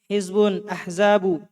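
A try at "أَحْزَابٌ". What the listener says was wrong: Ahzabun. Tanwin.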